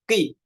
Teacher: huruf qaf ketika kasrah ini dibacanya seperti tipis, qi, atau bahasa para ulamanya tafkhim nisbi.